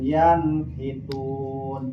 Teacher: Yanhitun aya nun sukun ngaharapan barisa kalimah maka nun sukun wajib dibaca idhar harfina dijelaskan suara n